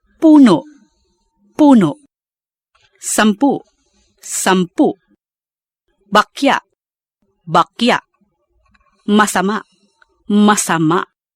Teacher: The end glottal catch, where the last syllable is pronounced without a stress, but with a glottal catch at the end.